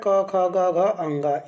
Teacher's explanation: कंठ में जो है क ख ग घ अंग, ये जो है प्रथम वर्ग के पांचों वर्ण आते हैं